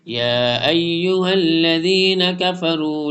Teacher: تو next page پر اب ہم پڑھتے ہیں یا ایھا الذین کفروا، اس کو تھوڑا سا لانگ کرنا ہے، یا کے اوپر اسٹینڈنگ زبر ہے، اس کے بعد یا ایو حمزہ کو یا کے ساتھ جوائن کریں گے